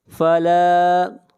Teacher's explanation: لا کو کھینچ کر پڑھیں گے ایک الف کے برابر